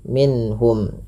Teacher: Karena dia menahan huruf min, padahal tidak boleh ditahan, tapi minhum langsung saja